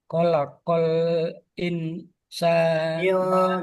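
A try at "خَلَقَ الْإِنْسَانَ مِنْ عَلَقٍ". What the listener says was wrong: Jangan in jangan jelas karena dis samar.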